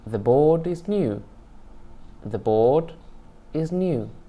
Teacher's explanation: The rise spreads over all the syllables following the nucleus.